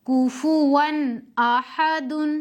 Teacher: اظہار میں نون کو ظاہر کر کے اپنے مخرج سے پڑھیں گے، بغیر غننے کے پڑھیں گے، جلدی پڑھیں گے